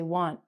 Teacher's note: After an N, we don't say the T. A T with an N, we change it to IN, we don't say the T.